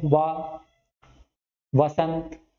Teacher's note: ठीक है, या रा ला हो गया, वाह कहां होगा, दांत और होंठ, बोल के देखिए, वाह यानी कि ऊपर का आपका जो दांत है या फिर दांत है, दांत के साथ में नीचे का होंठ हरकत में आता है वाह बोलते टाइम, वाह, नीचे का होंठ ऊपर के दांत पे जाके लगता है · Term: दंतोष्ठ